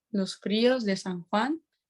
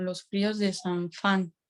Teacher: en la zona amazónica hay un cambio de la J por la F